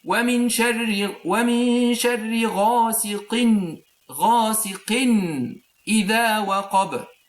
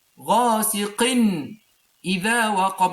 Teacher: When you know that there is doubling of fatha or kasra or dhamma, this means that when you make the connection between this word and the next word, you add an artificial noon. And this noon added is a sakina, noon sakina. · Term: noon of tanween